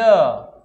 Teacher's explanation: य का उच्चारण करेंगे पहले ई आएगा, ई आता है तब य आता है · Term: अर्ध स्वर व्यंजन